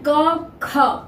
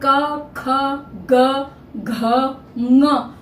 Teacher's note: ख भी उसी तरह से आएगा उसी वही उच्चारण स्थान से क ख ग घ पांचों वर्ण कंठ से होकर बाहर आते हैं कंठ को छूकर बाहर आते हैं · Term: कंठ उच्चारण स्थान